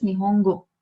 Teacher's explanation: So when it is going like this, nihongo. So a fall in pitch does not occur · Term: accents